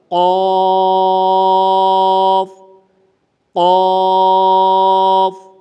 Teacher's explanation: زبان کی جڑ اوپر جو تالو کا نرم حصہ ہے وہاں پر لگے گی تو یہ قاف ادا ہوگا